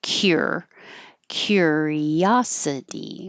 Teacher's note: Um, I just rewrote curiosity because that's a little unusual that the cu is like a ky